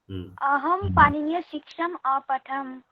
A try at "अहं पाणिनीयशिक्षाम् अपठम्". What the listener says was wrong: उत्तमम्।